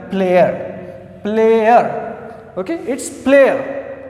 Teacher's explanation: the first one is A I plus schwa sound.